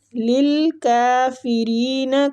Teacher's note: کاف کو کھینچیں گے اور باریک پڑھیں گے